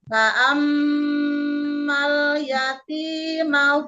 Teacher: Jadi ditahan dengungnya tiga harakat. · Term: mim tasdid